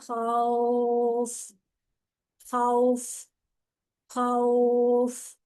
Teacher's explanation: خوف ایک الف کے برابر لمبا, دو یا تین کے برابر بھی آپ کر سکتے ہیں